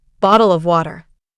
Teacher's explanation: British English, often non-rhotic, with softer R sounds